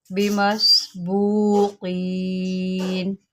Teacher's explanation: قاف کو موٹا کریں، سین کے اوپر سیٹی نکالیں